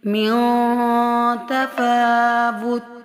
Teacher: میوں اخفا ہو رہا ہے، نون کو سائلنٹ کر رہے ہیں ہم